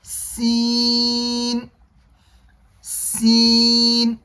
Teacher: سین کا مخرج ہے زبان کی نوک اور سامنے کے دانتوں کے کنارے، سین، سین۔ جب ہم سین کو ادا کریں گے تو سین کو ادا کرتے وقت زبان کی نوک سامنے کے دانتوں کے کنارے پر لگے گی، سین۔